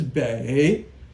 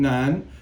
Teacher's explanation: So this is bei, third tone, and nan is second tone, nan.